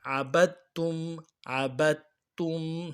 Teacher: دال کو نہیں پڑھنا ہے بلکہ تا کو پڑھنا ہے